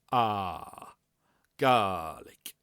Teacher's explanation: we want a nice long open a vowel